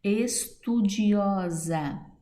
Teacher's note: Estudiosa, sílaba tônica, o, paroxítona.